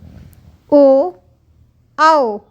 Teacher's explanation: आवाज़ आपको ऐसे लगती है कंठ से आ रही है, लेकिन आपके लिप्स भी हिलते हैं, कम होते हैं, ज़्यादा होते हैं। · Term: कंठ ओष्ठम